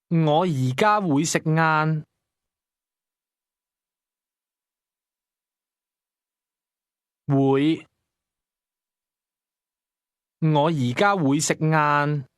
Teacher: Did you hear the mid rising tone in the word going to?